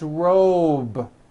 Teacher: robe also has a voiced B ending it's not rope with an unvoiced P it's robe okay let's